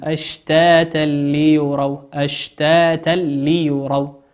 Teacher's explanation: تنوين أتى بعده حرف اللام واللام من حروف الإدغام بغير غنة